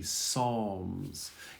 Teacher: we don't pronounce the P